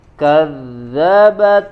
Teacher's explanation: jangan dzalnya jangan terbawa menjadi tebal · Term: huruf dzal